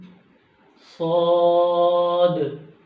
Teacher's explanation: یہ منہ بھر کر پڑھے جائیں گے